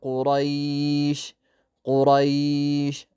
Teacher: እዚህ ጋር ራም እንዲሁም ቃፋን አውፍረናቸው ነው የምንቀረው።